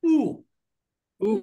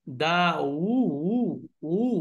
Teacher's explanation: এমনি হামজা যেহেতু যেহেতু পেশ থাকলে তো এমনি গোল হবে, কিন্তু হামজার উচ্চারণে কিন্তু ঠোঁট গোল হয় না, কিন্তু পেশের উচ্চারণ করতে গেলে গোল হবে। আর এটা একটু ভারী ভারী উচ্চারণ হবে, দাও, হু, দা।